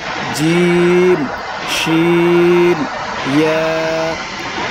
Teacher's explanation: জিহ্বার মধ্যখান তার বরাবর উপরের তালুর সঙ্গে লাগাইয়া উচ্চারিত হয় 3টি অক্ষর জিম, শিন, ইয়া